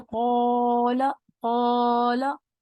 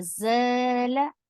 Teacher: और इसी तरह ज़ला, इसमें भी अलिफ है, ज़ा अलिफ ज़बर ज़, इसमें बारीक सुनाई दे रहा है। कौला में अलिफ मोटा सुनाई दे रहा है